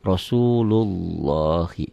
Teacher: lafaz Allah ini seakan-akan ada w-nya Jadi tebal tafhim